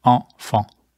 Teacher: As we pronounce this, notice the nasalized vowel sounds.